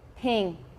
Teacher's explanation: In fact, this sound is neither E nor I. It's something in between